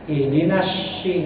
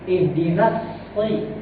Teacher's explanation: Dia suaranya suara dari lengkingan seperti huruf sin. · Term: huruf shad tebal